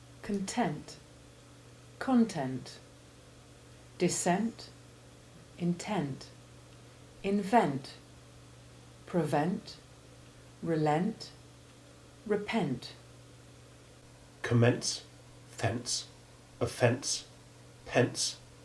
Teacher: examples in which the ending is stressed and therefore has the short e1 sound